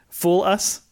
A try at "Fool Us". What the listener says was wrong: Yeah, I heard foolus, like one word.